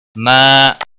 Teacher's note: ما الف مدہ ہے، 1 الف کے برابر کھینچ کر پڑھیں گے